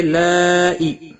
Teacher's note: لائی مد متصل ہے، 5 الف کے برابر کھینچ کر پڑھیں گے